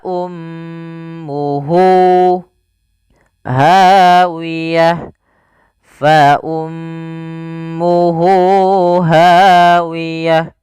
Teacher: adamir maka di sini kita namakan dengan mad silah Q yaitu Mad yang kita panjangkan dua harakat disebabkan karena ada ha damir